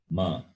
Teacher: Fifth letter is labial plus nasal. That is lips plus nose. Ma. So Pa, Pha, Ba, Bha, Ma.